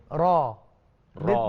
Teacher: Dia ada sifat dinamakan takrir dalam huruf ini, di mana kita menyebutnya tidak perlu sampai getaran itu ketika kita membaca tidak perlu getaran itu muncul berlebih-lebihan. Tidak perlu sampai ra, tak.